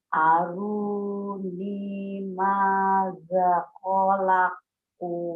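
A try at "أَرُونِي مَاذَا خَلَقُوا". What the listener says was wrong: Maza. Panjang. Ayo. Banyak yang panjang nih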